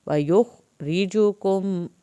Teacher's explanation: را کے نیچے زیر ہے، را پتلا پڑا جائے گا